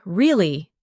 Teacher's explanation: when you ask a question like really, your voice goes up slightly at the end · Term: rising tone